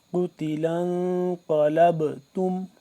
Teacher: قاف موٹا، با کے اوپر با ساکن ہے، تو اس کے اوپر ہم کیا کریں گے؟ قلقلہ کریں گے